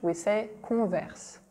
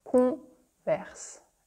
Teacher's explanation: There's a French R, there's a nasal sound, yeah, everything.